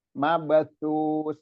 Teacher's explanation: Sa yang pertama terus sa yang terakhir, itu dua sa. Dua sa itu semuanya di toroful lisan, di ujung lidah bertemu dengan gigi seri atas.